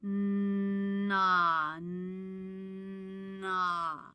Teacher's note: I feel a vibration for the N, which has a lowered soft palate, but not for the ah, which has a raised soft palate. There are only 3 sounds in English that are nasal, with a lowered soft palate.